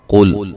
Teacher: قاف کو موٹا ادا کرنا ہے